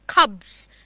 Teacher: it will sound za at the last, not sa, because there is a voiced sound before S.